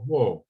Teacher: if we want to make that future tense, we go wo, with a falling tone.